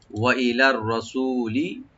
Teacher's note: সু এখানে টানবেন, লামে কোনো টান নাই